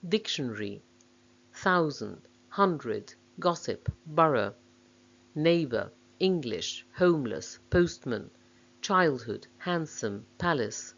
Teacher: English words with stress on the first syllable.